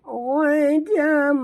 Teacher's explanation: Huruf ghain tebal. Jangan baca gadan, tapi baca gho.